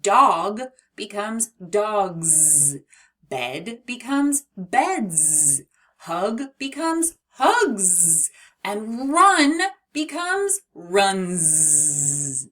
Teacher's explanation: And sometimes that S is making a buzzy bee sound, Z. When a word ends with a voice-powered sound like B, D, G, N, the S can't help but buzz. It just says Z. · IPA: /z/